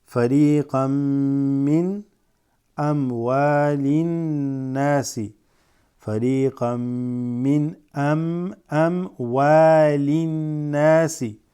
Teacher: You have a fathatain followed by a meme, right? So this joins. Fariqan min, as opposed to fariqan, qan, and then min. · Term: idgham